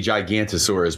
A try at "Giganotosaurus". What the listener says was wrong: There's an O in there. After the N.